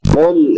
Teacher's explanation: قاف حروف مستعلیہ میں سے ہے، یعنی موٹے حروف میں سے، اس کو پر کر کے پڑھیں گے. لام بغیر قلقلے کے ہوگا.